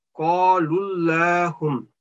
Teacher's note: This lullahum, thick sound because of this last vowel letter is with dhamma.